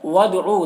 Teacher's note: دال حروف قلقلہ میں سے ہے، دال میں قلقلہ ہوگا